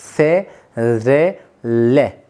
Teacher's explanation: तो ले पार्श्विक व्यंजन था, लेकिन उच्चारण जब इसका करते हैं हम तो उच्चारण स्थान होता है आपका दंत। ले का उच्चारण करते समय हमारी जीभ दांतों को टच करती है।